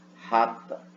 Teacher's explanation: Glotal é a maneira como se diz rata em Belo Horizonte. Você vai fazer bem que na glote, aqui embaixo, ó, rata, tá bom?